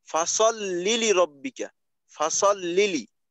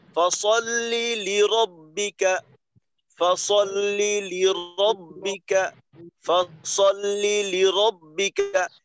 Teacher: মাঝে যে কয়টা শব্দ আসে যে কয়টা শব্দ আসে তো ওই প্রত্যেকটা শব্দের শেষের অক্ষরের উচ্চারণটাকে একটু একটু মন্থর করা হয় একটু নিচু করা হয় আর প্রত্যেকটা শব্দের শুরুর যে বর্ণটা থাকে ওইটাকে একটু সবল করা হয়